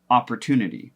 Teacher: the emphasis or the stress is on that tune part of opportunity. And so what happens to these other syllables is that we are tempted in American pronunciation to kind of reduce them to that schwa sound.